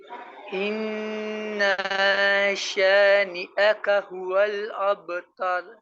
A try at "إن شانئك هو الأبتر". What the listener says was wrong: یہ ان نا نہیں ہے، ان نہ ہے، ان